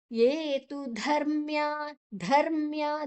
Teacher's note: ಧ ಮಹಾಪ್ರಾಣ ಐಡ್ ಬೊಕ್ಕ ಅರ್ಕಾರ ಒತ್ತು ಮಾಡ್ದು ಬೊಕ್ಕ ಉಂಡು ಐನ ದುಂಬುದೆತ.